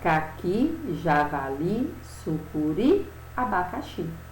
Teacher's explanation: Todas elas aqui são terminadas em I e tem a última sílaba como a sílaba mais forte. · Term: oxítonas